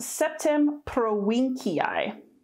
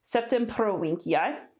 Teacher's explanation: aquitaine pretty simple this would be pronounced septim pro-winkeii so again a v that sounds like a w and a hard c septum prolinkii and again in latin you pronounce all the letters